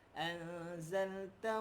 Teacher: Jadi bagi 50% pada sebutan nun dengung, kemudian 50% bagi pula pada zai. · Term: Ikhfa